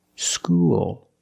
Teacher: When you said school, you used a dark L because the L is at the end of the word after a vowel